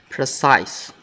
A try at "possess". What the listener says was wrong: Zeh. Not I, but Possess.